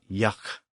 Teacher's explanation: It's kind of a breathy G or breathy K sound, and it's similar to the sound that we sometimes make at the end of a word like yuck.